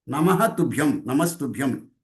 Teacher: That Namaha Visarga goes and becomes Sakaram. That is Sandhi.